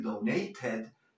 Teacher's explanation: And donated, donated, puedes decir donated también, claro que sí, porque la T la puedes pronunciar o como R suave o como lo que es una T. Pero tanto la R suave como la T son consonantes fuertes, entonces la E la debes pronunciar.